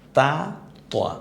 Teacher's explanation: জিহ্বার আগাটা সামনের দাঁতের গোড়ার সাথে যদি লাগে তাহলে তাটা উচ্চারিত হয়ে যাবে, আর তটা উচ্চারিত করার সময় তাই বলবেন, কিন্তু মুখটা হালকা একটু গোল হয়ে গেলে ত হয়ে যায়, তা ত।